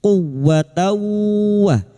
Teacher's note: Masuk ke huruf wau yang bertasdid hanya masuk tanpa ditahan lama-lama tanpa mendengung.